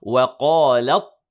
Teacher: the waw is light, the qaf is heavy